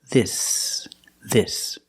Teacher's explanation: the S is a true s there's no voice there's no vibration